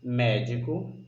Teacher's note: no caso de médico a sílaba tônica é justamente a antepenúltima a antepenúltima sílaba essa é a tônica portanto como se classifica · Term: proparoxítona